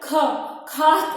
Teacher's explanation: हवा बाहर आती है, यानी इससे अधिक हवा निकलती है